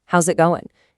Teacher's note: We link them. The S in how's blends with the it in it and it becomes a Z sound.